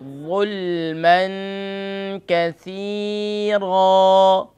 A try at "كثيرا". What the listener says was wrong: كاف کو لائٹ کریں. كثيرا